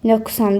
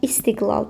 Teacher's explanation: Əgər özündən sonra gələn samit kar samitdirsə, burdakı q keçir olur k. Əgər özündən sonra gələn samit cingitli samitdirsə, yəni saitlə cingitli samit arasındadırsa, burda heç bir fərq yaranmır. · Əgər özündən sonra gələn samit kar samitdirsə, buradakı q keçir olur k.